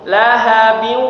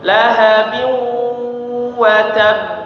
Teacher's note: Lahabiu bnya tanwin kemudian bertemu dengan huruf wau, maka diidgamkan dan ada dengungnya ya. Ada dengungnya jadi suaranya masuk ke hidung. Lahab ya. Ada suara sengau di hidung kita.